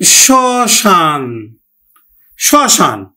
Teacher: শব্দের আদিতে যদি মফলা থাকে তাহলে মফলার উচ্চারণ হয় না, তবে নাসিক্য ধ্বনির উপর একটু প্রভাব পড়ে